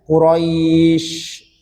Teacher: Quraisy ya, roi jangan rois karena ya sukun dia dihukumi i ya, Quraisy. Kemudian untuk shin ada sifat rohawa, biarkan dia ada sifat aliran udara ya, Quraisy. Jadi biarkan dia keluar dulu udaranya ya, biarkan keluar dulu, jangan langsung berhenti Quraisy.